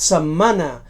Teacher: setmana amb la geminació del so bilabial nasal sonor